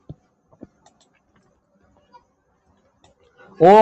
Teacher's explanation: ओ का जो उच्चारण स्थान होता है कंठ ओष्ठ। ये दोनों मिलके जो है ओ का उच्चारण करते हैं।